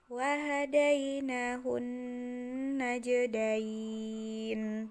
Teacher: Nunnya menjadi nun mati. Sebelum nun ini ada ya mati, maka dibacanya panjang.